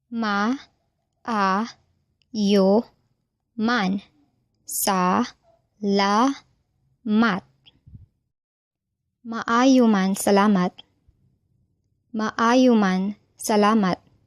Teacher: The stress in the word maayo is a, and in salamat is la.